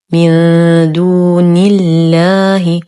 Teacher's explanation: نون ساكنة وبعدها حرف الدال، الحكم إخفاء حقيقي مع غنة كاملة مرققة